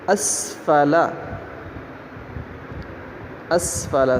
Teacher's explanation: سین کی آواز سیٹی جیسی ہوگی